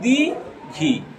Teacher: আমরা কথা বলার সময় হস্যইটা উচ্চারণ করি, দীর্ঘইটা কিন্তু উচ্চারণ করি না।